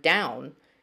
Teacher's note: the sound that o and w make in the word down is glided it's a diphthong